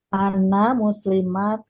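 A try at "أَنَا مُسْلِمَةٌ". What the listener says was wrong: Pendek. Jangan matun, jangan. Muslimatun atau muslimah.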